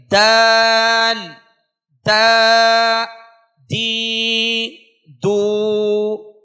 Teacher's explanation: زبان کی نوک سامنے والے دو بڑے دانتوں کی جڑ سے مل کر دال ادا ہوگا